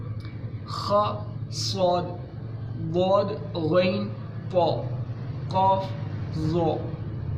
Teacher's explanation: ہماری زبان جو ہے وہ ہمارے تالوں کی طرف بلند ہوتی ہے مگر چھوتی نہیں ہے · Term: حروف مستعلیہ